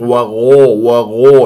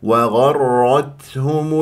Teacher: لا تبالغ ولا تقلقل وغرت وغرت وغرت وغرتهم وغرتهم وغو وغو لا تكور الشفاه هي غين مفتوحه ويجري فيها الصوت لا يجري فيها النفس